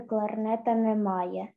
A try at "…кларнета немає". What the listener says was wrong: Якби ти ще ротичок відкривала, коли говорила, просто цінит не було твоїй мові.